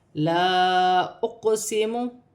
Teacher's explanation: قاف ساکن ہے، قاف میں قلقلہ پیدا کیا جائے گا، قاف حروف قلقلہ میں سے ہے۔